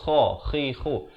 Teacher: Kha. Makhrajnya di hujung kerongkong.